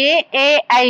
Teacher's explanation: ఏ, ఐ అనేసి కంఠ తాళవ్యాలు అనేసి ఎందుకు అంటారు అంటే దవడ ప్లస్ కంఠంతో మనం పలుకుతాం కాబట్టి కంఠ తాళవ్యాలు అంటారు